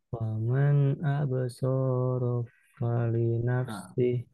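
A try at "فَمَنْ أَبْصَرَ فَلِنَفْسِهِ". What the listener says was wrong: Nah, sekarang di ro-nya kepanjangan. Faman absara fali nafsih.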